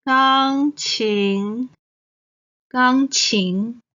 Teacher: 钢 is the first tone. 琴 is the second tone.